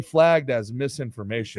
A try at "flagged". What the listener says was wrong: You said flag. No, it sounds like fag.